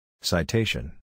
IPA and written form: saɪˈteɪʃn (citation)